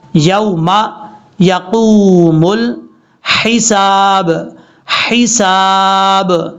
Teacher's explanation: لام کے بعد جو ہا ہے یہ ہا بریک ہے، اس کو بھاری ساؤنڈ کے ساتھ نہیں پڑھنا، کلیئر کر کے پڑھنا ہے